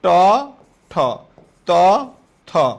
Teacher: অঘোষের মধ্যে আবার জোড়ার প্রথমটা অল্পপ্রাণ, পরেরটা মহাপ্রাণ